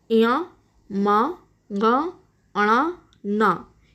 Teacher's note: हर वर्ग का पांचवा जो अक्षर है, पांचवा जो वर्ण है, उसका उच्चारण स्थान नासिका है।